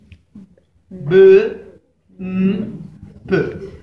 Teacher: Porque se pronuncian con la unión de los labios. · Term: Labial